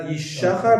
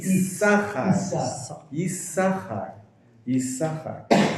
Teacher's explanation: Instead of a shin, it's a sin. It's pronounced with an S sound instead of a sh sound.